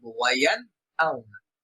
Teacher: ওয়ায়ান আউনা, এখানে নুন সাকিন আসছে, পরবর্তী হরফ হামজা, এই জন্য এই নুনে আমরা গুণনা করব না, বরং দ্রুত করব ওয়ায়ান আউনা। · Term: ইজহার